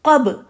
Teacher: لیکن قاف کو موٹا رکھیں گی، قاف موٹا حرف ہے